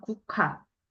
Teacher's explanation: 기역이랑 히읗이 만나서 키읔으로 바뀌었고